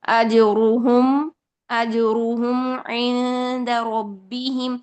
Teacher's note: میم میں توسط ہے، یعنی 50% شدت اور 50% رخوت. جب آپ 100% شدت لے کر آئیں گے تو شدت کی وجہ سے مخرج میں سختی ہوگی، جب آپ اس کو مخرج سے چھوڑتے ہیں تو وہ مخرج ہل جائے گا.